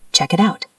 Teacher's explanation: It ends in T. Out starts with a vowel. That's a flap T.